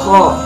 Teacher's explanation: Makhorijul huruf kho terdapat pada ujung tenggorokan yang paling dekat dengan lidah. Sedangkan sifatul huruf kho terdiri dari 5 sifat, Yang pertama adalah hamas, yaitu nafas berhembus. · Yang ketiga adalah isti'la, yaitu mengangkat pangkal lidah ke langit-langit atas.